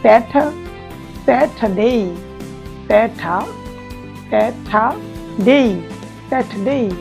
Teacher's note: British অ্যাকসেন্টে সাধারণত আর বর্ণটা যদি শেষে থাকে বা মাঝে থাকে সেটা উচ্চারিত হয় না। তো আমরা এখানে স্যাটার বা স্যাটার না বলে আমরা বলবো স্যাটারডে, স্যাটারডে।